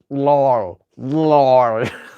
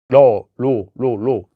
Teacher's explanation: You don't want the tongue to hit really hard. It's a tap, just like a D.